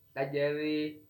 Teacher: di sini ro-nya berharkat kasroh, maka hukum bacaannya yaitu disebut tarkik, tipis